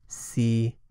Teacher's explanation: tone one is a level tone in the middle of the spoken range